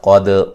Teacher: قاف کو موٹا کریں گے، دال پہ قلقلہ کریں گے